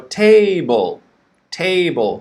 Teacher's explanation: table table stress on the first syllable